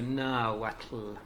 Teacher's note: that TL I think is a sort of affricate type of sound